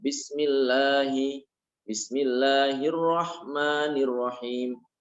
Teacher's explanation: Mimnya dibaca panjang. Haknya dibaca panjang, itu namanya mat tabi'i. Penjelasannya, mat berarti menambahkan.